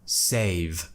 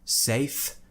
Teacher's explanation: make sure you're at least getting a tiny bit of voice in there so that we know it's a voiced consonant and it's a V and not a F